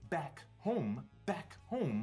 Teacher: the b and the m really just require the lips to close